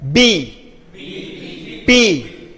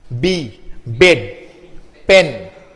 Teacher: So this letters or later the words starting from these letters, okay, normally are bilabial because the noise is generated. These letters, the sounds for these letters are generated by joining two lips.